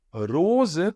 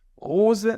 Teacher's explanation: garganta aqui você escuta você tem que escutar a vibração então ou você vai dizer ros colocando na ponta da língua Ou você vai dizer rosa na garganta mas nunca como se fosse o h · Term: r consonantal